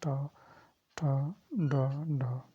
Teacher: मूर्धन्य जो आपको जीभ को मोड़कर जो कही जाती है